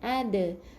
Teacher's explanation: Dal bila dimatikan huruf qalqalah ada lantunan yang kecil